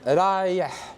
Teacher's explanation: Breathy H. It's the kind of H you make when you clean your glasses.